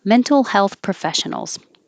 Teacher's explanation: but it is professionals so adjective adjective noun mental health professionals even though i'm coming down in pitch for professionals i'm still going to put stress on the stressed syllable